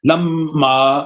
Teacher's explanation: میم اگر مشدد ہو تو اس میں غنہ ضروری ہے، اور غنہ کہتے ہیں ناک میں آواز لے جانے کو